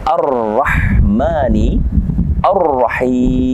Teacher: bertemu dengan huruf u' di sini ada alif lam syamsiah maka alif lam nya tidak kita baca langsung masuk kepada huruf ro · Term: alif lam syamsiyah